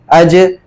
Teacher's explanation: یہ حروف جب بھی ساکن ہوں گے تو اس میں قلقلہ ہوگا، آواز کو ہلا کر نرمی سے ادا کریں گے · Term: حروف قلقلہ